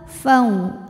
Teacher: Sebab ada waw sukun didahului baris fathah, maka dibacanya dilembutkan. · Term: huruf lin